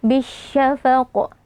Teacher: kita leburkan lamnya ke dalam huruf shin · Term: alif lam syamsiyah